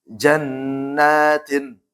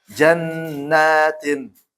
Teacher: Ingat gunnah plus mad tabi'i. Kenapa? Karena nun tasydid ya.